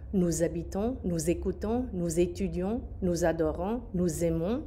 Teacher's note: And the nous and the vous forms have that Z sound.